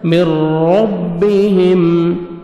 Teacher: را کو اپنے پر بھی کرنا ہے، را کو موٹا بھی کرنا ہے، را زبر ہے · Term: را مشدد